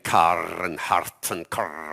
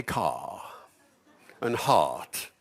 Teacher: almost every English accent in the world pronounces an R after the vowel, but not RP